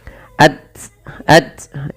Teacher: Syiddah itu tertahannya suara dan ta juga memiliki sifat namanya hamas. Maka dalam membaca tasukun urutannya adalah kita membaca dengan syiddahnya dan baru dengan hamasnya